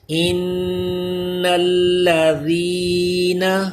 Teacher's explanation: نون مشدد میں غنہ کیجئے اور ذال پہ سیٹی پیدا نہ ہونے دیں. زبان دانتوں سے چپکا کے رکھیں. · یہاں پہ ذال کا خیال رکھیے. ذال پہ سیٹی پیدا نہ ہو. زبان اوپر کے دانتوں سے ٹچ رہے